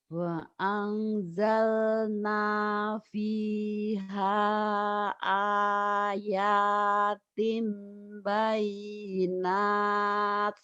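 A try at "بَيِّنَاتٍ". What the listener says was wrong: Bayinatnya jadi hamas ya. Bayinat.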